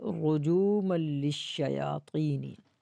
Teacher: را کو موٹا کریں گے، جیم واپس جو، اس کو کھینچنا بھی ہے.